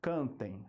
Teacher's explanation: Por que que é um ditongo nasal primeiramente porque o som passa também pelo nariz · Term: ditongo nasal decrescente